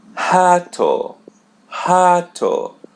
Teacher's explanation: For example, the letter R, or as we say in Portuguese, the letter R, R. So when it comes in the initial of the Portuguese word, we pronounce it as H. For example, the word rato, which means rat.